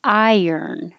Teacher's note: So I often tell people to think of I earn or I yearn because you're going up very high when you say the I vowel, iron. And then when you slide your tongue down from the high position to a lower position to curl it back for the R, you'll hear a little Y sound accidentally.